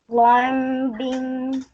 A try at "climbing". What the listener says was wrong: Climbing. You don't pronounce the B. It's a silent B in the middle. So you pronounce this word climbing.